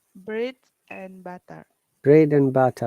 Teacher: we have to pronounce and as n